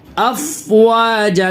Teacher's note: फ़ा के ऊपर आवाज़ ज़रा भी नहीं हिली और हिलाना भी नहीं है, क्योंकि फ़ा हुरूफ़ क़लक़ला के 5 हरफों में से नहीं है, इसकी वजह से इसमें आवाज़ हिलेगी नहीं।